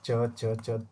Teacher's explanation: च तालव्य और महाप्राण नहीं है अल्पप्राण में आता च च च तुरंत बोला जाता है अल्प प्राण का मतलब